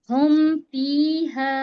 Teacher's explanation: शफवी यानी होठ होठों से जाहिर करना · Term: इजहार शफवी